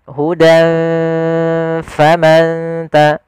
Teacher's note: fa itu di bibir, maka kita samarkan ke bibir kita dengan seakan-akan kita langsung mau mengucapkan huruf fa. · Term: ikhfa